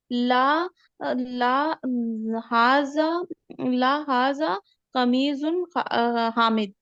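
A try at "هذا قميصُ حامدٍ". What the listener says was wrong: एक तो कमीज जौद नहीं है, सौद है लास्ट में, और दूसरा उसमें ना तनवीन मत लाइए ना, कमीसु हामिदिन।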